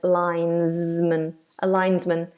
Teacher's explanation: That S is like a Z.